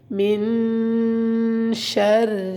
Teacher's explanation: من میں غنہ کرنا ہے، نون ساکن ہے اور آگے حروف ہلکی نہیں آ رہا تو یہاں پہ آپ غنہ کریں گے۔ من شر، را کو باریک پڑھنا ہے کیونکہ را کے اپنے نیچے زیر ہے